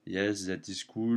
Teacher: not too much variation because in French you don't have particular stress on syllables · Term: monotone